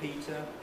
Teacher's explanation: you notice i put the t at the end of the syllable and not at the beginning of the next syllable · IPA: piːt ə